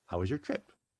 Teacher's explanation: i'm saying kind of pushed together how was your trip uh because it's one syllable it's a falling glide intonation